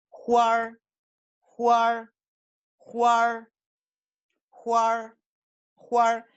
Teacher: fíjense cómo la A, se convierte por medio de esta sílaba en una vocal retroflexa